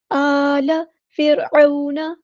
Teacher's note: را یہاں پہ ساکن ہے، لائٹ لیٹر ہے، باریک پڑھیں گے